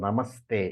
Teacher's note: the visarga of namaha changes into a half s